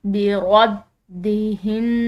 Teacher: बदह्न नून मुशदिद है। मुशदिद नून पर गुना करेंगे।